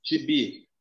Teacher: A sílaba mais forte de gibi é o bi. Então, se a última sílaba é a mais forte, eu tenho uma palavra oxítona. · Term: sílaba tônica